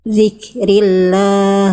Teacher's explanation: Itu kafnya percikan nafasnya ada. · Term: Kaf sukun